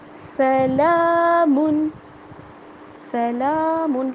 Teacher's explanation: لام کے اوپر کھڑا زبر ہے، اس کو کھینچ کر ادا کریں گے